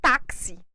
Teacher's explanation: vamos ver quando ela não é tônica por natureza palavra táxi o i aqui ele perdeu a sua força para o a